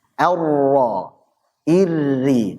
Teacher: Jadi ada takrir, ada getaran, hanya saja getarkanlah dengan benar gitu. Getarannya halus lembut.